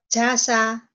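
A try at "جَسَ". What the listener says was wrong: Bagus yuk. Jangan ragu ya Bu ya.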